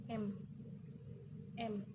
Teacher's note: Pembentukan dilakukan dengan bibir rapat dan udara mengalir melalui hidung. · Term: konsonan nasal